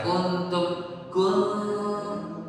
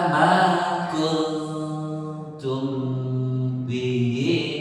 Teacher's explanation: Gunah itu keluarnya dari ini jalur hidung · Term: dengung